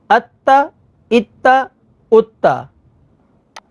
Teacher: تا کے اوپر تشدید ہے تو اس کو ہم نے 2 دفعہ پڑھا، ایک دفعہ اپنے سے پہلے والے حرف کے ساتھ حمزہ کے ساتھ اور دوسری دفعہ خود اس کی اپنی حرکت کے مطابق ذرا رک کر۔